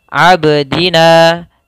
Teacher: huruf ini mati, maka harus memantul huruf ba-nya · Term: qalqalah